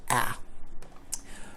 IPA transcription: æ